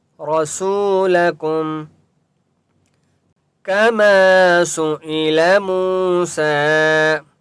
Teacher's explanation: کما الف مدہ ہے، میم کو ایک الف کی مقدار کھینچ کر پڑھیں گے